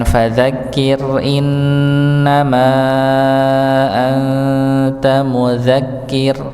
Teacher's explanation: ra sukun pada ayat ini fadzakir maka dibaca tipis. Ya, dan diakhiri dengan mudzakir juga sama dibaca tipis.